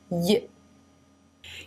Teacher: Here I have not drawn the tongue pressing all the way to the roof of the mouth because the center part of the tongue is actually leaving room for air to pass through. So the sides of the top of the tongue are pressing the sides of the roof of the mouth, leaving a small passageway down the center